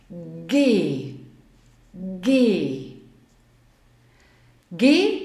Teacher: G wird recht weit hinten im Hals ausgesprochen